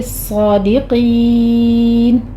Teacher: صاد بھی پر ہے، قاف بھی پر ہے، آخر پر مد عارض وقفی کر لیں گے، صادقین، 6 کاؤنٹ کر لینا ہے۔